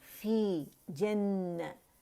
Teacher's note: فی یا ساکن سے پہلے زیر آ رہی ہے، کسرہ آ رہی ہے، یا مدہ بن رہے تو فی 2 کاؤنٹ کے لیے آواز نیچے جائے گی